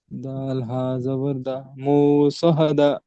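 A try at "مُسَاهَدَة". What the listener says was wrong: সহাদা করছেন কেন? স জবর স।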